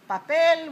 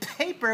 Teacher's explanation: in Spanish we say papel with a p but in English we say paper with a p Stronger